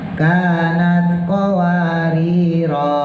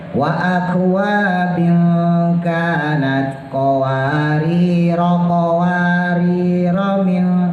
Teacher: Ketika kita waqaf maka bacanya panjang. Kanat qawariro karena kita waqaf. Tapi kalau kita tabrak maka jadi pendek.